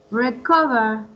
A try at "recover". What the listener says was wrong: Right.